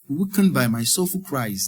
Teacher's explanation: The I diphthong in by, in my, in cries.